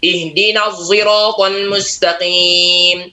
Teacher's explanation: Bukan zai ya, tapi ini penggabungan antara shad dan zai. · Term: ismam